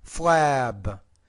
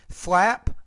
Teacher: When you have the P at the end, the vowel is shorter. When you have the B at the end, the vowel is longer because the B is a voiced consonant and the P is a voiceless consonant.